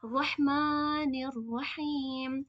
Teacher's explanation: میم میں کھڑا زبر ہے تو اسے کھینچیں گے 2 کاؤنٹس · मीम में खड़ा जबर है तो इसे खींच टू काउंट्स